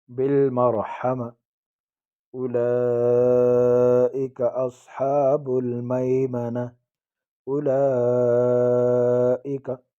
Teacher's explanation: اولئک مد فرعی 4 یا 5 الف کی مقدار اس کو کھینچیں گے. اولئک اور حمزہ بغیر جھٹکے کے پڑھیں گے.